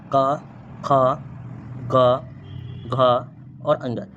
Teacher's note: क वर्ग और इसका उच्चारण स्थान जो होता है वो होते है कंठ